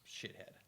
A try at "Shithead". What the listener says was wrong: The D is silent.